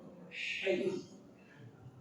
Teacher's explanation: Kemudian ha dari tengah tenggorokan.